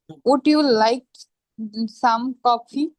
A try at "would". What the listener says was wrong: Would you like some coffee? Ud না বলে উজ বলি উজ. Would you like some coffee?